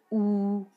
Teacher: तो होंठ पास पास आ रहे हैं, मुंह बंद हो रहा है, और पश्च है क्योंकि ये जीवा के पिछले भाग से उच्चारित होता है